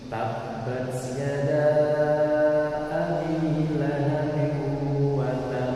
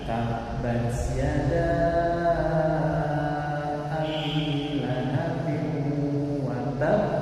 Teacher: Tasydid, maka harus berat dan ditahan sebelum dibangkitkan. Nah, yang benar tabbat yada abi lahabin watab, ya, ditahan sebentar baru kemudian dipantulkan. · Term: qalqalah